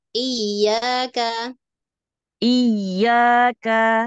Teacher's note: makhrojya itu Tengah lidah bagian pinggir ya kanan kiri yang ditekan